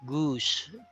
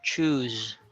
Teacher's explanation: Goose is pronounced as S. Choose is pronounced as Z.